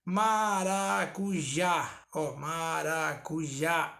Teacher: a última sílaba sendo a tônica ela é uma oxítona